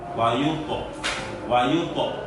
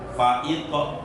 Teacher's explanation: ketebalan huruf to harus dijaga betul tebalnya apabila sukun jatuh setelah fathah dan dhammah. Ya, ketebalan huruf to ketika to-nya itu sukun, tetapi sebelum to sukun ada huruf yang berharokat fathah atau dhammah.